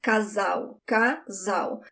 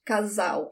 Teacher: When the L is the last letter of the word, you do not roll your tongue. It sounds like a W in English. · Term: sound of the L